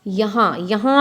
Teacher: यहाँ में हाँ की जो आवाज़ है वो कहाँ से आ रही है? वो नाक से आ रही है, तो हा के ऊपर चंद्र बिंदी लगेगी। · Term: अनुनासिक